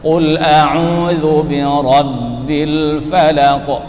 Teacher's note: setiap lam mati diperjelas supaya tidak samar atau mirip dengan nun mati, karena berdekatan makhraj atau satu makhraj. Rabbil dipertegas.